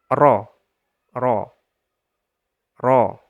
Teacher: ujung lidah kita tempelkan ke gusi atas cuma lebih naik sedikit daripada Nun · ro itu lebih tinggi sedikit lebih naik sedikit ro dan ada getarannya tapi jangan terlalu jangan terlalu gitu ro ro jangan douelnya getarannya